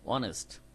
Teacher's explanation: প্রথম শব্দকে অমিট করে বাদ দিয়ে পরের থেকে ও থেকে শুরু হবে সাউন্ডটা, অনেস্ট। তো ও ভাওয়াল সাউন্ড, এই কারণে এর আগে কি বসছে?